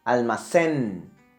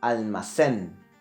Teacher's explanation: It finished in the letter N, almacén. But the accent will be located in the last syllable